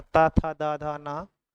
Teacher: दंत ध्वनि है तो ता था दा धा ना, ये दंत होती है